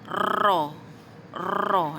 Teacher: hujung lidah diangkat ke lelangit atas serta dilengkungkan sehingga terlihat lidah bahagian belakang. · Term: huruf ra